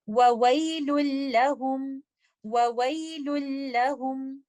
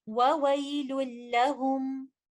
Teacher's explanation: سے، وَوَيْلٌ لَهُمْ، تو یہاں پر اظہار نہیں بلکہ ادغام ہوگا، نون ساکنہ مکمل طور پر مرج ہو جائے گا بعد میں آنے والے لیٹر لام کے اندر